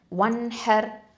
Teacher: ராசுக்குன் வந்து தஃப்ஹீமாக உச்சரிக்கணும், ஏன்னா ராசுக்குனுக்கு முன்னாடி எழுத்து ஃபத்ஹா இருக்கிறதுனால